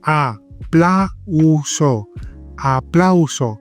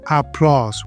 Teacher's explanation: We don't put this A and U together to make a new sound.